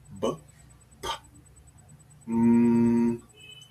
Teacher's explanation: bilabial sounds use both lips